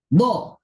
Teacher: Jadi dhad menurut ahli fonetik hari ini diucapkan dengan syiddah.